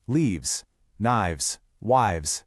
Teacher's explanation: That sharp F sound in leaf, knife, or wife. It just softens into a V sound.